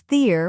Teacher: Next is ther, which rhymes with peer and is stressed.